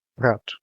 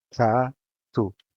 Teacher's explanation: The A is open and the O is shut.